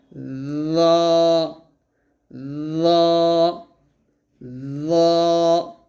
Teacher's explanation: জ বলার সময় অবশ্যই জিহ্বাটা যেন নিচের দাঁতে অথবা উপর তালুর সঙ্গে না লাগে সেদিকে সতর্ক থাকতে হবে। জ বলতে হবে জিহ্বাটা উপরের দাঁতের আগার সঙ্গে লাগিয়ে মোটা করে বলতে হবে